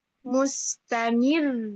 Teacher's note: Disukunkan, huruf sebelumnya berharokat kasroh. Maka ro sukunnya ini tipis, tarkik. Tapi suaranya tetap naik.